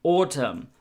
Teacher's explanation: and autumn, we don't pronounce the N at the end.